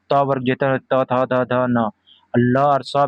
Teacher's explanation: दंत दांतों से त वर्ग जो त थ द ध न ल और स भी दंत होते हैं।